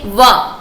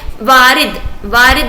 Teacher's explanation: हम इन्हें बोलते हैं दंतोष्ठ, यानी कि दंत से और ओष्ठ, दंत और ओष्ठ। ठीक है, दंत और ओष्ठ, दंतोष्ठ।